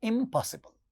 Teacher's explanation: ध्यान दीजिए, पॉसिबल में पहला साउंड प है जो बाइलेबियल साउंड है. तो इसके पहले जब नेगेटिव प्रीफिक्स आएगा तो वो बाइलेबियल साउंड बन जाता है, म. इसीलिए इसका प्रोनाउंसिएशन होता है इम्पॉसिबल. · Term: बाइलेबियल नेजल